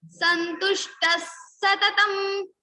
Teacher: So visarga is followed by sa. So same sa will come in the place of this visarga.